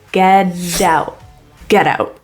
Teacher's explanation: T in out is a glottal T, and that's where it stopped in the glottis.